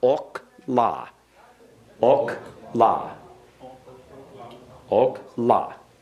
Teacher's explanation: Remember, the accent goes on the final syllable.